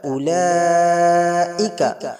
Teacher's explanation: হরফে মাদ্রা পরে হামজা রয়েছে, এজন্য এটা মাদ্দা মুত্তাসিল হবে। 4 থেকে 5 আলিফ পরিমাণ টান দিয়ে পড়ব।